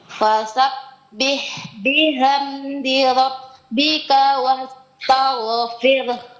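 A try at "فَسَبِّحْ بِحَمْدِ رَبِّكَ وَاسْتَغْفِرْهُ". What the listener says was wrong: Nah, huruf H-nya Bu, bihamdi. Samakan dengan sebelumnya fasabbih.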